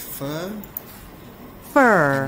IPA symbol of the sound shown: ɜː